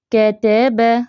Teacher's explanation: تو باریک حروف کے لیے زبر والے باریک حروف جو بھی ہوں گے ان کے لیے منہ کم کھلے گا، آواز کم اوپر کو ہوگی، تھوڑا سا سائیڈ وائز اسٹریچ ہوں گے، ہمارے ہونٹ جو ہے نا تھوڑے سے پھیلیں گے